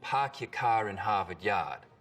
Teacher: We call this the start vowel. In Boston, it's usually pretty fronted.